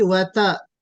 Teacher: ता में तफखीम नहीं होगी, वता, ता बारीक पढ़ा जाएगा।